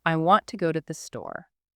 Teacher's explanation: The strong words there are want, go, and store. The other words just connect them.